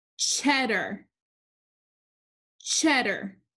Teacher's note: this word is cheddar cheddar the first syllable is accented so the a r combination it's not in the accented syllable